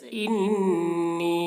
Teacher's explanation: انی نون میں بھی غنہ کر کے پڑھنا ہے